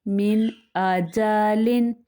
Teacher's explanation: ابھی نون ساکن کے بعد کیا ہے؟ حمزہ حرف حلقی میں سے ہے، تو یہاں پہ اظہار ہوگا یعنی غنہ نہیں کریں گے